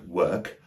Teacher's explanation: when there's a W-O-R, it is normally produced with a lazy neutral vowel, the It's just like a schwa, but longer. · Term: long schwa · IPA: /wəːk/